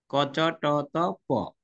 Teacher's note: ক্রমান্বয়ে ভিতর থেকে আস্তে আস্তে বাইরের দিকে আসছে